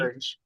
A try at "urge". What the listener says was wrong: Yeah, urge. I think you said erg. Urge. It's urge. It's a soft G. Urge.